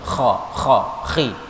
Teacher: huruf kha yang harus di tenggorokan harus muncul kha, khi.